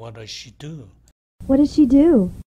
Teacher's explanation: 그 다음에 what does she do의 경우도 마찬가지죠. 여기서 does she 이 발음이 중복되니까 Z 발음을 하지 않고